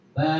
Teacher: fathah diikuti Alif sama dengan fathah berdiri dibaca panjang satu ayunan